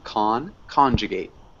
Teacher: so we do emphasize the first syllable